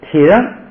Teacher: 在里头。明跟那个咱们汉文的这个明的明是发音完全一样。它里头有不少单词跟咱们汉语发音是一样，可能那个时候就是好像是你比如说洞，可能那个时候大家都钻山洞都是说洞，哎，就现在洞。那个时候可能很早的那比较少的那些单词吧，明，哎，叫明。慢慢后来发展的复杂了，就开了啊。空哎，这个他姓语的他，同卡班儿，哎，只是读就行了，也可以卡巴都可以，空错，咱们讲过那个错是集合起来的意思，他们集合起来就是他集合起来就是他们了。翻过来20页，康巴，撒康，到现在它没有任何变化，都是原字母的音读。下边一个啊，铁扔，这个就有变化了。人这个然在第二音节变成平声，这一个变化。再一个呢， 这个人是闭元音，这个提的a呢也闭一点，就变成一 ，所以就说你要是想变全了，就是体人，提就变成体人，所以这个呢就是不是太重要，